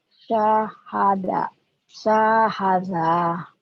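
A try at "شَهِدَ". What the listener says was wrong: salah yang panjangnya ujungnya doang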